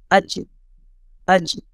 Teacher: یہ کیا ہے, یہ زبان کی بیچ سے ادا ہوتا ہے. زبان کا جو سینٹر پوائنٹ ہے, وسط زبان جو ہے, اور اس کی مقابل اوپر تالو کو ٹچ ہوتا ہے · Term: جیم